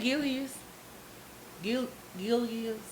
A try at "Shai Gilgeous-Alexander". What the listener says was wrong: Shai Gilgeous Alexander. No, you saying Gilgeous. I don't know what you saying. You saying like you got I-L-I or something.